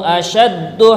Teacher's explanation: asyaddu, nah, shinnya besar, dalnya tasdid